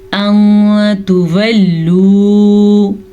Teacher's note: अं तुवल्लू, मैंने यहाँ पे नून को छुपाया है क्योंकि तजवीद के रू से यहाँ पे इख्वा का कायदा हो रहा है। नून साकिन के बाद हरूफे इख्वा में से ता आया हुआ है, तो इस वजह से हम नून को छुपा के गुन्ने के साथ पढ़ेंगे